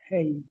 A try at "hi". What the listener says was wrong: Hi. It's not hey. Okay. Hey is like in English. Tapi dalam Bahasa Melayu, hi. Hi. That is the pronunciation.